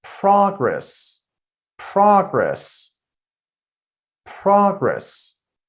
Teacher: So, I'm putting the stress on the first syllable.